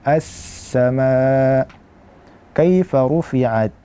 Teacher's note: sin juga merupakan huruf ar-rikhawah, yaitu mengalir suara.